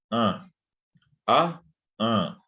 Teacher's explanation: producen el fonema bien cerrado, bien intenso de la A nasal